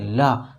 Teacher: तो जो ला बोल रहे हैं ना, तो अगल बगल, जीभ के बगल, अगल बगल से वायु निकल रही है, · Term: पार्श्विक व्यंजन